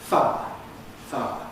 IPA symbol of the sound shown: faə̯